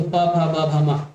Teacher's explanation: जब भी आप बोलेंगे तो आपके जो दोनों होठ आपस में टकराएंगे